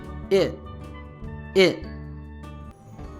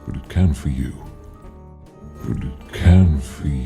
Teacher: the t of it because it is at the end of this syllable becomes a stop t sound